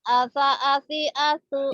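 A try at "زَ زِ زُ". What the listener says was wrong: Iya, aza, azi, azu, bukan asa, asi, asu.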